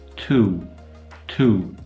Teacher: our own English vowel is also quite unusual for a high back vowel it's not actually very back · Our oo type vowel is arguably a diphthong, where you have an oo coming into a w. Tu, tu. There's actually a bit of lip rounding going on there, which makes it a w style sound.